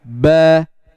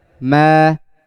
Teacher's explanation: Yang ba menutupnya lebih menekan, ya, lebih menekan. Dan yang mim hanya sekedar menutup biasa.